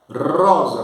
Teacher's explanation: Rosa, com R bem rotolante, né?